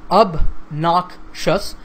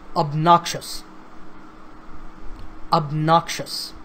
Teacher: this word has 3 syllables, obnoxious, and the stress is on the second syllable